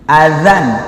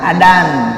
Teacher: dal ada titiknya, za ujung lidah di gigi